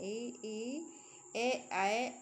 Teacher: जिन स्वरों के उच्चारण में जीभ का अग्रभाग काम करता है, उनको कहते हैं अग्रस्वर।